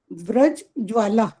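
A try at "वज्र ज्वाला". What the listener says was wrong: ये आधा नंबर काटो इसका, व्रज नहीं है, वज्र है।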